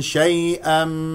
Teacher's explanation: لا تضغط على مخرج الياء ولا تخرج معها هواء وهي هنا ياء لين لانها ساكنه قبلها مفتوح